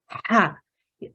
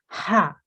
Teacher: it is pronounced from the middle of the throat and air should Escape slightly